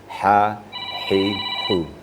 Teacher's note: itu adalah wastul halak, di tengah-tengah tenggorokan. Tidak ke bawah dan tidak ke atas.